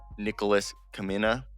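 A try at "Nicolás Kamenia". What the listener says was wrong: Nicholas Hamenia. You don't pronounce the K.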